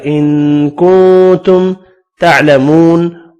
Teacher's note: واو مدہ کو ایک الف کی مقدار میں کھینچ کر پڑھنا ہے